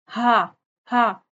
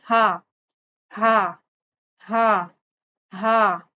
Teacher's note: آپ کی زبان لیٹی رہے گی، ٹھیک ہے، حلق کے نیچے والے حصے سے، یعنی یہ اقصی حلق سے ادا ہوگا